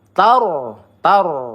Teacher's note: ro sukun sebelumnya ada huruf berharakat fathah maka kita baca tebal